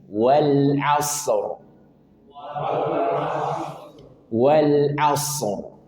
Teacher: Karena ro dia punya sifat tafkhim tebal karena sebelumnya fathah.